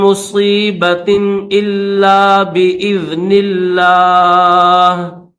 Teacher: لفظ اللہ کو باریک کریں گے